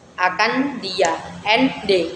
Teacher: Sebenarnya tempat keluar hurufnya itu sama, d dan n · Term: asimilasi progresif